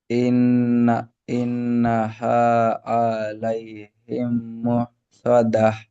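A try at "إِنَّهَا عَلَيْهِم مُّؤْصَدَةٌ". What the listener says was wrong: আ বলে টান দিচ্ছেন, আ টান হবে না, আইন যাবার আ, ইন্নাহা আ।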